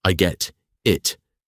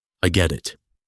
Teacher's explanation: the word get sounds exactly like a soft D sound because it sits perfectly between two vowels. Do not say, I get it.